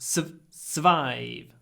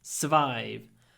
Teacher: it's written S-U-R, but we don't say the R, just survive.